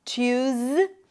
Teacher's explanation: And then it's a Z sound, TOOZ, not an S